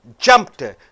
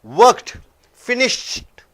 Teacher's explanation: after these unvoiced consonants e d comes it is not a separate syllable